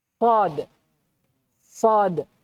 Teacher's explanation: Huruf tebal itu cara penyebutannya itu dengan terangkatnya pangkal lidah ke atas langit · kalau sad terangkat bagian belakang itulah yang menyebabkan apa bunyinya menebal